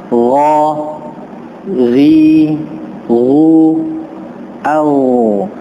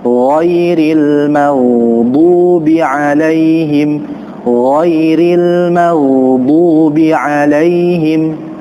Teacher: huruf yang keluar dari tenggorokan bagian atas ini, keduanya huruf yang memiliki sifat tebal, tafkhim. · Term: huruf ghain